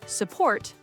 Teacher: President, the E is a schwa. Support, the U is a schwa.